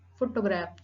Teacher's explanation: Primary accent on the first syllable